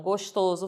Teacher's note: Esse oso faz a vogal tônica fechada.